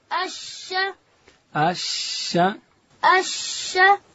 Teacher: شین ادا کیږي د ژبې منځ به لوړ تالو ته ورلو.